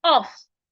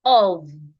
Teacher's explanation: the F here sounds like V